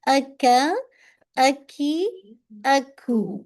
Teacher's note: जैसे ही soft palate का complete होता है हार्ड स्टार्ट होता है, बस वहीं से काफ का मखरज है